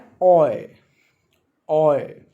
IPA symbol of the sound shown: ɔɪ